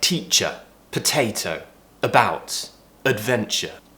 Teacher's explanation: mouth is relaxed tongue is relaxed in the middle of the mouth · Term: schwa sound